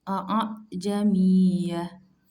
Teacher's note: Tasil cara membacanya dengan membunyikan Hamzah seperti huruf ba yang samar huruf H yang samar yaitu antara bunyi Hamzah dengan bunyi Alif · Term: tashil